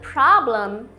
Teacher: no som do M final encosta os lábios